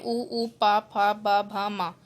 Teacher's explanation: ओष्ठे दोनों होठों से बोले जाते हैं